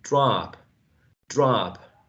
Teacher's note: the short o becomes a long ah